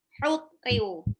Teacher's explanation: Itu pakai H tipis, tenggorokan tengah.